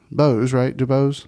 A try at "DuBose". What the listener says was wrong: DuBose. Don't French it up. Keep it Southern.